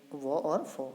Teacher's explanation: तो जो दंत्योष्ट व्यंजन है वो है फ और व